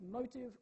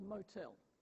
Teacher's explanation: motive is stressed on the first syllable motel on the second syllable